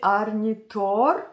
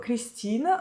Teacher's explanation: je prononce les noms à l'islandaise ou à la suédoise si vous voulez, c'est pour ça que je roule les R